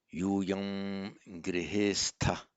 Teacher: Applying Sandhi, the final M of Yuyam becomes Anuswara, and it's pronounced as a ng here because of the following g